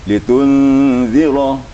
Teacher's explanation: zal itu bacanya lembut, gigi kita jangan rapat, dipertemukan ujung lidah dengan ujung gigi ya atas, kemudian gigi jangan dirapatkan.